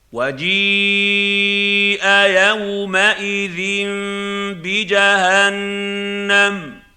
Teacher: وَجِيءَ يَوْمَئِذٍ بِجَهَنَّمَ، خلاصہ یہ ہے کہ پہلے لفظ پر اچھی طرح مد کریں، پھر تنوین کو میم سے بدل کر غنہ کریں، اور آخر میں جہنم کے نون پر بھی آواز کو تھوڑی دیر ناک کے بانسے میں ٹھہرائیں تاکہ غنہ مکمل ہو سکے۔